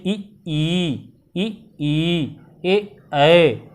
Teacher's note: जिसके उच्चारण में जीभ का अगला भाग काम करे, अग्र भाग काम करे, उसे अग्र स्वर कहते हैं।